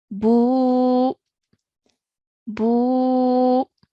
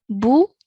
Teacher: because it's a waw mud, our sound or our timing will now stretch for 2 counts. So this will be pronounced as boo, boo.